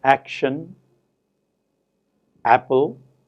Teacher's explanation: in english we have these words action apple in which stress is on the first syllable